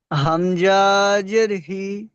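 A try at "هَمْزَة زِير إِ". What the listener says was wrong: হামজা টান হয় না, হামজা, হামজা জে, জের ই।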